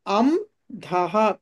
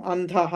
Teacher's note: అనుస్వారం తర్వాత ధ వచ్చింది ధ అంటే తవర్గంలోని అక్షరం కాబట్టి తవర్గంలోని పంచమాక్షరం వస్తుంది నకారం